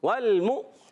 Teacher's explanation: میم کو حمزہ سے ملائیں گے اور حمزہ کو جھٹکا دے کے ادا کریں گے